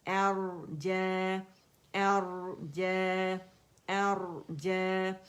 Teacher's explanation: الف مکسورہ اس کی آواز کو کھینچ رہی ہے, جیم کی آواز کو, تو 2 کاؤنٹ کے لیے آواز اوپر جائے گی